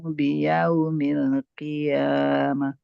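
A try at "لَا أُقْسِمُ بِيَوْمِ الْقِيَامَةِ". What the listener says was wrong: Mu-nya jangan terlalu panjang Bunda.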